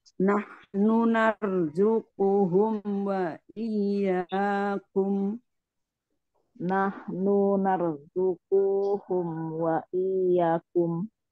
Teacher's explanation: Nahnunya satu harokat saja sama kunya juga.